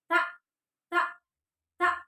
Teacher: dia ada suara sedikit angin sedikit ya, desis. Nah, itu dinamakan bahwa tak itu bersifat hamas ya.